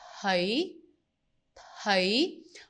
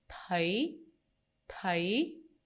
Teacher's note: So again, we don't say t, thấy, we say thấy, thấy. We shape the T at the beginning and we will emphasize on the H. So sometimes if we speak fast, you might not even hear the T, but my advice is always try to pronounce it correctly at the beginning.